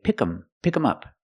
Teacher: they don't pronounce the th sound